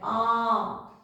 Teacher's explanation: पूरा खुला ठीक है विवत का मतलब क्या है पूरा खुला इसमें हमारा मुख द्वार जो है उच्चारण करते समय पूरा खुल जाता है